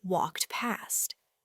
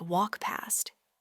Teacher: The K and T sounds at the end of walked can often be significantly reduced. And the T in particular might almost disappear, especially before the P sound in past.